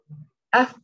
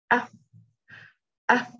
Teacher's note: Dia ada angin, hams. Af. Ada angin keluar.